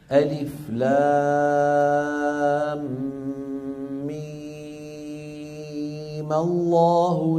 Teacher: مدها ست حركات على عدم الاعتداد بالحركه العارضه